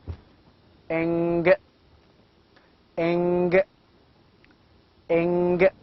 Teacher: And again we have a nasal sound of the same group, velar, that is eng, eng, eng. Of course, eng is a velar nasal voiced sound